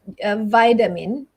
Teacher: Vitamins, yeah, the T there is also a slight D sound. Basically, most T sounds in American English, when it's in the middle of words, it changes to a D sound.